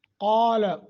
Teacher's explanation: قال، قاف کو موٹا کرنا ہے، کھڑی زبر ہے، 1 سیکنڈ کی مد کر کے پڑھیں گے۔